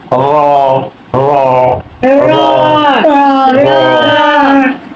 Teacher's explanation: জিহ্বার আগার উল্টা পিঠ তার বরাবর উপরে তালুর সঙ্গে লাগাইয়া